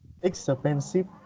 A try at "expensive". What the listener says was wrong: Yes, you need to say X, okay? Expensive.